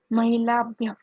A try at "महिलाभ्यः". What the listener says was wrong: You have to pronounce the visarga also. Mahilabhyah. It's a full matra, not mahilabhyah, mahilabhyah. Full matra.